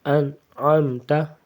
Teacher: کے بعد عین حروف حلقی میں سے آتا ہے، عین غین، عین حروف حلقی ہے تو اس لیے یہاں پہ اخفا نہیں ہوگا، غنہ نہیں ہوگا